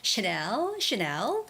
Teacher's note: when you're saying Chanel, that brand name, you have to put the emphasis on the second syllable. The stress goes on the second syllable, which is Chanel, and it has only one N.